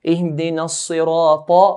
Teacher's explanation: Ta is from the heavy letters. So we pronounce it in a heavier manner.